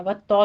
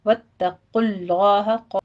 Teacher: تا باریک رکھنا ہے، صرف آپ نے اس کی تشدید ادا کرنی ہے ، واتو نہیں کہنا، واتقوا اللہ، خوف کو پر پڑھتے ہوئے